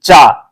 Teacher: जब आप चा बोलेंगे तो जब तक आपकी जो जीभ है आपके तालु को स्पर्श नहीं करेगी तब तक आप चा नहीं बोल सकते